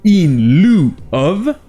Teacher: Et comme on l'a vu avant-hier, EU en anglais est souvent prononcé OU. Et en plus de ça, le I ici est souvent muet.